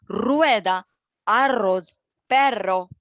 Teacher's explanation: When it begins a word like rueda, or when it appears in a double form, redoble, entonces tiene un sonido muy fuerte